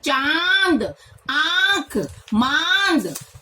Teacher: उच्चारण करते समय हवा नाक और मुख दोनों के दबाव के साथ बाहर निकलती है। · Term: अनुनासिक